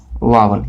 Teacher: जो वकार होता है वावन, वह दांत और ओष्ठ के सहयोग से उच्चारित होता है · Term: दंतोष्ठ